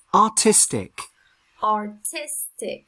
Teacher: So the strongest sound is on the second syllable.